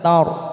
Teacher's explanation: ro sukun didalil fathah kita baca tafkim, kita baca tebal. Tar ta fathah diikuti alif 2 harokat.